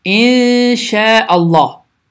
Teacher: Deməli, ixə qaydası baş verir. Bu zaman n səsi iki saniyə uzadılaraq səs burundan çıxaraq tələffüz olunur